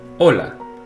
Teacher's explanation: next we have the letter H in Spanish it's silent